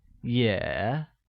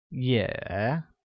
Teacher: pronounced with a falling rising tone